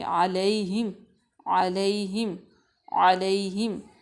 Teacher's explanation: اس کے بعد ہے علیہم، عین جو ہے اس کو واضح کریں گے، لئی یعنی کہ یا کو نرم پڑھیں گے، یا ساکن سے پہلے زبر ہے اس لیے یا لین ہو جائے گی، تو اس کو ہم نرمی سے پڑھیں گے، علیہم، علیہم، علیہم، اس کو ہم 3 مرتبہ پڑھیں گے۔